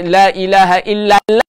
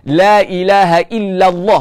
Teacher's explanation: kena baca dengan tebal lah lam dalam lafaz jalalah